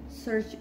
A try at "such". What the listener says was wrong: You search. Keep saying search. What am I searching for? A such. Such. Not search. such.